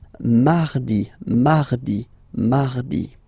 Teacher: So you can hear that you don't pronounce it that strongly, this R.